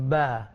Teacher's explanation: dia adalah huruf syafatain, ya, dua bibir yang bertemu yang menyebutnya ba.